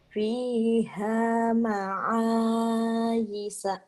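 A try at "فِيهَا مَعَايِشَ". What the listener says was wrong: fiha ma'ayisha. Kurangnya shinnya aja kurang yisha. Shin. Kurang cet. Sya kurang ya. Isya.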